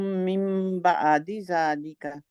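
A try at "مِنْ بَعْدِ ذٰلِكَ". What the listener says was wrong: بعد ذالک، بعدی نہیں، وہ تھوڑا سا حمزہ کی طرف چلا جائے گا، جھٹکا لگ جائے گا.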